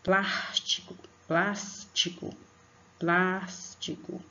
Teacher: É a sílaba plas. E a vogal A é a que vai ser acentuada.